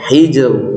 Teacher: Qalqalah sugro ya, qalqalahnya sugro, tidak terlalu kuat ya.